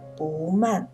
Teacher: 不字在四声音节前读二声，所以在不紧不慢的慢的前面读二声